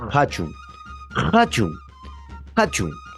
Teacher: El que tiene más ronquido va a ser esta consonante, la, la Q y la H, que viene a ser una oclusiva aspirada, o sea, es una Q con ronquido y a la vez hay un ligero soplido al momento de pronunciar. Por ejemplo, hachun, hachun, hachun.